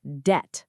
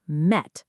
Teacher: Silent B again. It's just debt, rhyming with met, not debt. >> Interesting.